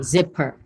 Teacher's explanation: you don't say per because it's schwa